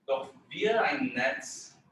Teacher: because ein is not on the sort of stress of that sentence, so you don't actually need a glottal there